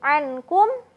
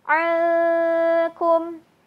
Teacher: Ketika nun sukun bertemu kaf, maka tadi ditambah ya, suara nun sukunnya akan terdengar jadi samar. Bukan jadi ankum, tapi alkum.